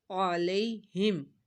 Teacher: یا ساکن سے پہلے زبر ہے تو یا لین ہو رہا ہے یہاں پہ اس کو کھینچنا نہیں ہے